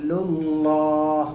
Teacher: حلق میں نہیں جانا بلکہ للہ، منہ سے ہی باہر آ جا رہا